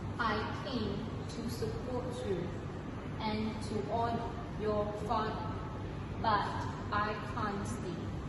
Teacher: Notice how they use rhotic accent because they pronounce the R sound at the end.